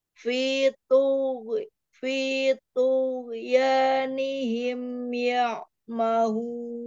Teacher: Hurufnya sama-sama huruf isti'ala, tapi lebih tebal huruf to-nya.